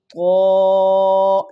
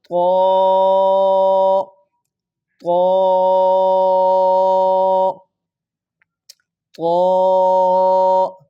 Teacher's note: تو کو پر کر کے موٹا کر کے پڑھنا ہے، یہ ہر جگہ پہ جہاں پہ بھی آئے گا موٹا ہی ادا ہوگا، ٹھیک ہے؟